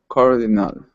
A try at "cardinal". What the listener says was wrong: Okay, instead of cardinal with an ah, it's ul. Flatten the vowel. Cardinal. Okay, now this AL will sound exactly like the same ending as people. It's the same sound. Cardinal.